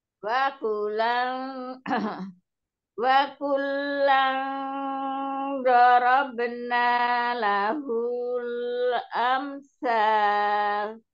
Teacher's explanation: yang ikhfa dilamain, dikasih durasi, jangan lupa. Dan nun tasdid, mim tasdid.